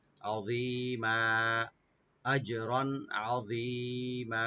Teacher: মিমের যে দুই জবর আছে, আমরা এক আলিফ পরিমাণ টেনে ছেড়ে দেব, মাধ্যে আওয়াজ হয়ে যাবে।